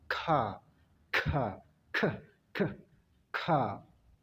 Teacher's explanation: Ya, itu yang dinamakan plosive, ledakan. Ya, kalau di dalam bahasa Inggris istilahnya adalah voiceless velar plosive, yaitu ledakan atau letupan. Jadi orang sana itu tidak mengatakan K biasa seperti kita, tapi dia berkata K, K, sekali lagi K, K, K, K.